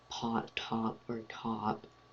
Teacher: When you say pot, top, or cop, you kind of produce a little bit of air.